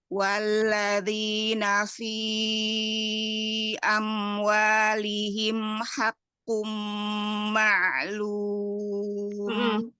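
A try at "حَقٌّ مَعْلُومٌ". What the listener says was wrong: Sama tawasud mim, kemudian qafnya tebalkan. Haqqu. Mimnya ya, mim tawasudnya.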